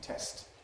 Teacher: So in the word ‘test’, where there’s a preceding obstruent, you never get a glottal stop. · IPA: [test]